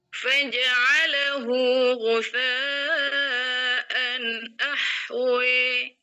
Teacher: 4 harokat itu kalau kita baca tuh nggak terlalu pendek, nggak terlalu panjang. Jadi sedengan. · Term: Mat muttasil